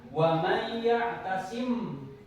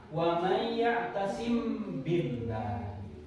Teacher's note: Nah, keterangannya mim mati. Nah ini mim mati bertemu dengan huruf ba, itu disebut ikhfa syafawi. Cara membacanya barusan wa may ya'tasim.